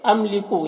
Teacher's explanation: یہاں پر میم ساکن ہے اور میم ساکن کے بعد لام ہے، تو یہاں پر اظہار شفوی ہوگا، اسے جلد پڑھتے ہیں۔